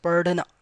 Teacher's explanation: it's not DH, perfect DH sound, but little R sound comes. Padhna, alright, so it's padhna.